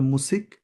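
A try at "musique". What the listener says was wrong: মুজিক, not সিক but জিক, সিঙ্গেলের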